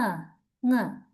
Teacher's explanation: By using the back of the tongue, right? And the soft palate or the velum, we completely block the airstream. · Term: velar consonant